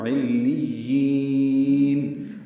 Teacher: وقفاً مد عارض سکون ہے، یہ یا کو لمبا کر کے پڑھیں گے اور نون پہ اظہار کریں گے